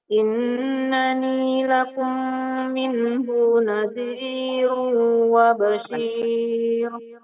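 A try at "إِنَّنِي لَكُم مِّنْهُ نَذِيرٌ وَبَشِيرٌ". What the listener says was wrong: Ya, nggak boleh tertahan di hu ya. Innani lakum minhu nadhirun wa bashir.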